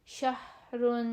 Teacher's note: اندر سے ہا نکلتی ہے بغیر کسی رگڑ کھائے, بغیر کسی روک ٹوک کے, وہ جو اندر سے نرمی سے ہا نکل آتی ہے, اور ہائج والی جو ہا ہوتی ہے یہ وہ ہے.